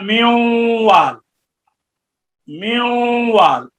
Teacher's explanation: नून जब होगा, नून का इदगाम जब वाव में होगा, तो अब नून जैसे आप पढ़ते हैं म्यूवाल, म्यूवाल, अब देखें आपने होंठों को गोल किया हुआ है और आप नून पढ़ रहे हैं, तो अब नून बयक नून बयक वक्त जो है, नून बयक वक्त जुबान की नोक से भी निकल रहा है और खैशूम से भी निकल रहा है